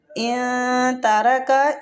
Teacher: ادھر نون ساکن پہ اخفاء حقیقی ہو رہا ہے